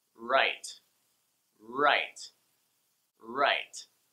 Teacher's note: I like to put my tongue further back in my mouth, so instead of the tip of my tongue hitting the upper front teeth, my tongue is back - it's nowhere here my front teeth - in fact, my tongue is up and back, so that the sides of my tongue either side right there are touching my molars - those of the very far back on the sides of your mouth - so, touching your molars on the sides of your upper row of teeth: 'right... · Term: R sounds